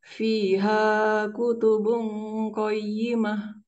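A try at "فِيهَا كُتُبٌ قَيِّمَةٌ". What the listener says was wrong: Ya, bisa dikurangi sedikit lagi durasi madu tabi'inya. Fiha kutubung qayyimah.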